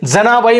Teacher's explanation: ज चा उच्चार बघा दंत तालव्य आहे